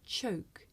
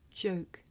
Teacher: okay you may find it difficult to hear the difference between the voiceless sound that you hear at the beginning of the word choke and the voiced sound that you hear at the beginning of the word joke